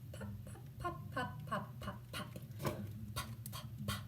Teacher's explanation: Another early developing bilabial sound produced on the lips.